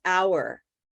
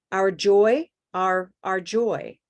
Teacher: notice if I have that word by itself, it's our, but when it's part of a sentence, our joy, our joy, it becomes quite a bit less prominent. It's less important.